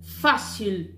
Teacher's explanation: A sílaba tônica é o fá. O sil é átona